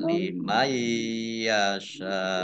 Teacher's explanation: Sin fathah alif mat tabi'i tetapi karena bertemu dengan huruf hamzah dalam satu kata maka menjadi mat wajib muttasil harus dibaca panjang 5 harokat.